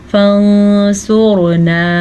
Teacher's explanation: را کو بھی پر پڑھیں گے کیونکہ را خود تو ساکن ہے لیکن پیچھے والے حرف کے اوپر پیش ہے تو اس پیش کی وجہ سے یہ را پر پڑھی جائے گی. · سواد کو پر پڑھیں گے کیونکہ سواد حروف مستعلیہ میں سے بھی ہے یعنی ان 7 حروف میں شامل ہیں جو پر پڑھے جاتے ہیں.